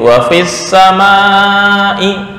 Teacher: Enggak boleh dipanjangkan di fa. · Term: hadzf